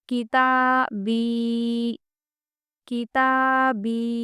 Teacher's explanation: ता भी खींचना है और बी भी खींचना है, तो इनमें बैलेंस करना ज़रूरी है।